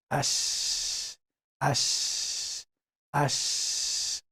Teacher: It's not only flowing the air like other letters, but with letter Shiin only, we spread the air. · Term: tafashi